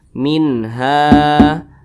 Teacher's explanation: namanya maad Thobi'i panjangnya dua harakat atau kira-kira dua ketukan